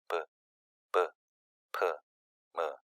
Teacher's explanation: 모두 다 입술에서 공기의 흐름에 장애가 일어나서 발음된다는 사실을 확인할 수가 있습니다. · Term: 순음